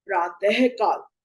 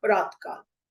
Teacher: विसर्ग हा की आवाज देता है